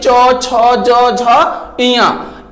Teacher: कभी आप ट्राई करके देखिए, जो क वर्ग के वर्ड है, इसकी जो आवाज, हमारी ध्वनि जो हवा टकराती है कंठ से, क ख ग घ अंगा, उसी प्रकार से च वर्ग का जो होता है तालु से, जो हमारी जीभ है तालु में जाकर टकराती है